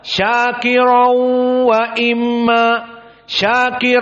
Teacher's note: makhrajnya dari khaisum dan makhraj dari khaisum mempunyai dua harakat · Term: idgam bighunah